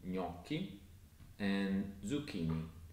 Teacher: If you see a C-H spelling in Italian, it's actually pronounced as a hard K sound, not as a soft ch sound as it would be in English.